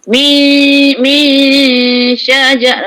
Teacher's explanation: Shin tu sifat dia ialah tafashi berhamburan suara semasa menyebut huruf tersebut. Berhamburan keluar angin antara gigi depan dengan langit.